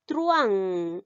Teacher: Entonces la U y la A no se van a llegar a separar, sino se unen porque estamos refiriéndonos al diptongo. El diptongo es unión de vocales que forman una misma sílaba.